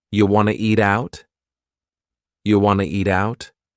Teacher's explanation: we have reduced want to to become Wana